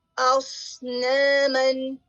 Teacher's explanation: صاد جو ہے حروف صفیریہ میں سے بھی ہے اور ہیوی ہے, اور اس میں ہمس بھی پایا جاتا ہے